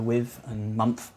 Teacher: There's TH fronting, so with and month, which is something that a Londoner would do.